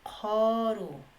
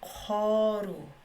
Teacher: la vocal U lo vuelve con una vocal como si fuera O abierta